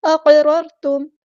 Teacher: اقررتم قاف ہمارا heavy letter ہے، پورا ادا کریں گے. قاف ساکن ہے تو کلکلا کریں گے، آواز کو ہلائیں گے، آواز میں ایکو پیدا ہوگی · را ساکن کو ہلانا نہیں ہے اور یہ را ہمارے پاس ہیوی ہے، پورا ادا کریں گے دونوں را